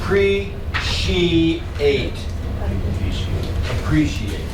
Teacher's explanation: notice that the CI sometimes has a sh sound like special